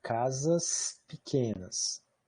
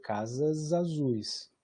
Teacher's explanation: o S do plural de casas vai ser desvozeado nessa frase